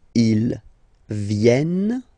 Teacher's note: You will have to pronounce this E like eh.